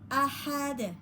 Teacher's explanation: hati-hati, hanya ha tengah tenggorokan ya, harus bisa membedakan pada ha tengah tenggorokan ya